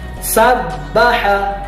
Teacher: Dibacanya sabbaha, huruf ba-nya ditahan, sabbaha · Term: huruf ba bertasydid